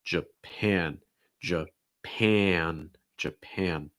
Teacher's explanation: you have that and sound as well in that second syllable first syllable is going to be reduced so schwa